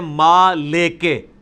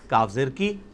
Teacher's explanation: وہ پڑھتے ہیں ما لے کے، لام زیر لے کاف زیر کے، جبکہ معروف عربی کیا ہے؟ لام زیر لی کاف زیر کی